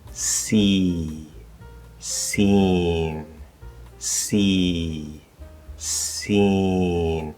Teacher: So if I compare, for example, see, seen, see, seen, you can hear, it's small, but you can hear the difference. There's a little bit escaping through the nose. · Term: nasalization